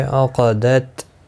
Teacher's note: عقدت کسی بھی حرکت والے حرف کو کھینچنا نہیں. قاف مستعلیہ ہے، پر پڑھا جائے گا. ای یالین ہے، تھوڑا نرمی کے ساتھ کھینچ کر ادا کریں گے.